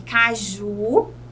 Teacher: a última sílaba é a sílaba tônica, é o Ju